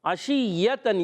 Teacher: شین وسط زبان وسط تالو سے ادا ہوتا ہے. شین میں تفشی بھی ہوتی ہے، منہ میں آواز پھیلتی ہے. عشیۃً، یا مشدد ہے، رک کر ادا کریں گے مگر یا کے اندر یا کی آواز پیدا نہیں.